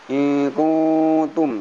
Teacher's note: Kemudian in kuntum ada nun mati, ada ka, pada nun mati ada ta didengungkan ikhfa namanya